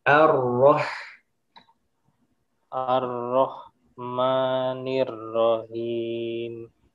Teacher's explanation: Jangan buru-buru ar-roh, tapi rasakan dulu tasydid di ro-nya.